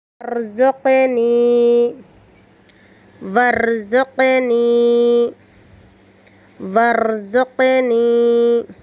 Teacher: را ساکنہ کو پر کرے اور قلقلہ سے بچا کے رکھے، قاف ساکنہ کو قلقلہ کرے